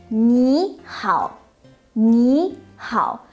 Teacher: changing tone when two third tone characters are red in sequence the first syllable turns into the second tone